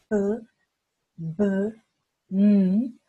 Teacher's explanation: que son sonidos bilabiales porque se ocupan los dos labios, ¿no es cierto?, que se juntan, p, b, m, vamos a usar el dedo índice y el dedo medio.